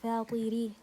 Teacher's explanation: the ra here has a kasra. So I'm going to pronounce it فاطري, light